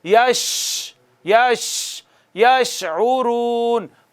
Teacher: شین پر آواز منہ میں پھیلنی چاہیے